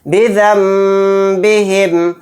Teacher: بِذَنبِهِمْ، بِذَنبِهِمْ، نون ساکن کے بعد با آ گیا تو یہاں پر بھی اقلاب کا قاعدہ ہوگا، نون کو میم سے بدل کر غنہ کے ساتھ پڑھیں گے